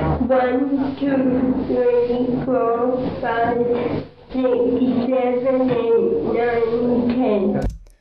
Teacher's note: So her tongue is clearly, kind of - you can hear it's bunched up and tight, so it's not able to make really precise little movements. · you can hear there is some hyperadduction of the vocal folds in her voice